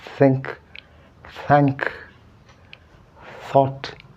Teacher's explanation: Sorry, this is voiced, but this is voiceless. The vocal cord doesn't vibrate.